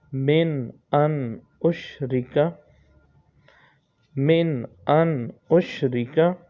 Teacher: اس میں غنہ نہیں ہوگا کیونکہ نون ساکن کے بعد حمزہ الف یہ آ جائیں تو غنہ نہیں کرتے، اور نون کے بعد پھر نون ساکن کے بعد پھر اگلا الف آ رہا ہے، اس لیے اس میں بھی غنہ نہیں کریں گے۔